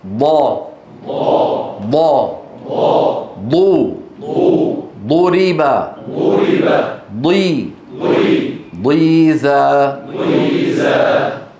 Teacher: الاستطاله هي اندفاع اللسان عند نطق الضاد من مؤخره الفم الى مقدمته